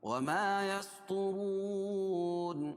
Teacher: را کو موٹا پڑھیں گے، طا کو موٹا پڑھیں گے کیونکہ حروف مستعلیہ میں سے ہے، اور را بھی پر ہو گئی ہے کیونکہ را کے اوپر پیش ہے.